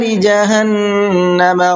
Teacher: جہنم نون کے اندر غنہ کریں گے اس لیے کہ اس نون کے اوپر بھی تشدید ہے